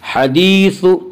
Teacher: حدیث، یا مدہ، یا مدہ وہ یا جو ساکن ہو، اس سے پہلے زیر ہو، یا مدہ کو ایک الف کے برابر کھینچ کر پڑھیں گے